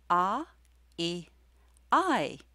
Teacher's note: clearly is a diphthong the position of your mouth changes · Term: Latvian diphthong